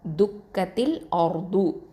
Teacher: இந்த இடத்துல வந்து ரா வந்து தஃஹீமாக தான் ஓதணும், அதாவது வல்லினமாக ஓதணும்